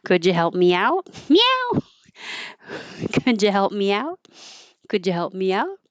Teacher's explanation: U changes to ya to be more casual. And there's an invisible Y because you're going from me, where the tongue is very high, to out, where the tongue is low. So you slide it down and it makes a Y.